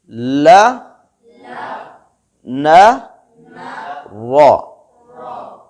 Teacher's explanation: नोकेले दांत से लेकर सामने वाले दांतों तक जब टच होती है तो इन तीन हुरूफ की आवाज आती है। ल, न, रो। ला में ज़ुबान की करवट और ज़ुबान की नोक मुकम्मल तौर पर लगती है।